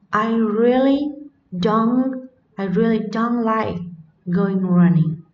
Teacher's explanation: trọng âm ở đây được nhấn vào từ phủ định don't